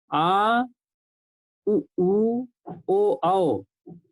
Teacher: ये जो है इनका उच्चारण हमारा पश्च भाग से होता है।